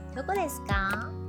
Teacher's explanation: The question, like in English, ends with a rising tone, right? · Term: rising intonation